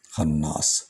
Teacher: خناس نون پر نون غنہ بھی بنے گا، اور کیونکہ اس پر شد ہے 2 بار پڑھا جائے گا